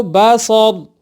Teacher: بہرحال باصور وقف میں ہم لوگ کیا پڑھیں گے اس کو باصور۔ کیا تبدیلی آئی کہ را کا زبر ہم نے ہٹا دیا، را کو ساکن کیا